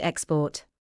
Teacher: In export, the first syllable is stressed because the word is a noun.